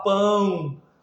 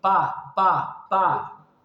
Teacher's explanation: uma passagem de ar tanto pela boca quanto pelo nariz, né? Para você falar coração, para você falar mamão, para você falar pão. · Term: nasal